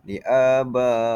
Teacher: Jadi huruf mad itu terdapat huruf mad bertemu dengan hamzah. Jadi kita perlu baca 4 hingga 5 harakat. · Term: mad wajib mutasil